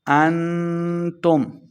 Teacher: اخفا یعنی غنہ کر کے پڑھیں گے